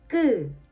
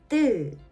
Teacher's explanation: No air, strong tension. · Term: 된 소리